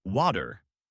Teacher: I started noticing the American flap T, where a T between two vowels softens into a D sound. Water becomes water.